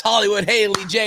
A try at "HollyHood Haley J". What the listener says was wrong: I think you said Hollywood.